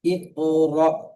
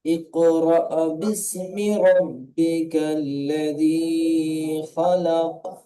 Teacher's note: হামজার উপরে সাকিন আছে, সাকিন আলা হামজাকে ধাক্কা দিয়ে বা ঝটকা দিয়ে উচ্চারণ করতে হয়।